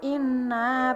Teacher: bacaan gunah sebab nun bertasydid, cara bacanya dengung